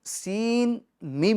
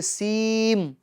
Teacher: یعنی نون ساکن کی آواز میم کے اندر جا ملے گی، ٹھیک ہے، کیونکہ یہاں پر ادغام ہو رہا ہے۔